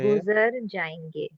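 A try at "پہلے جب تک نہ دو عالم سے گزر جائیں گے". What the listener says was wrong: जी, well done.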